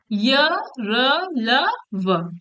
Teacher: जिन व्यंजनों के उच्चारण में मुख के किसी भाग को नहीं छूती और हवा बिना रगड़ खाए मुख से बाहर निकल जाती है, उन्हें अंतस्थ व्यंजन कहते हैं